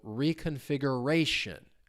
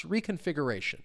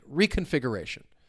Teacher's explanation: Stress comes on the second to last syllable. Another quick little pronunciation hint, when a word ends in T-I-O-N, the stress syllable is going to come on the syllable before it.